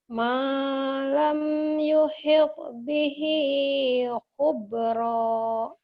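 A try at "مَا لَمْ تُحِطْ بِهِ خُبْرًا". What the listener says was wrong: malam tu. Kenapa jadi yuhid?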